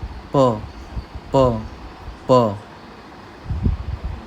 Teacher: प और ब, इन दोनों के बीच की साउंड है, प प प